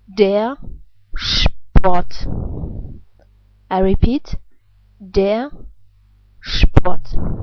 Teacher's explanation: In this case, it's at the end of a word, and therefore it's pronounced like a reduced R sound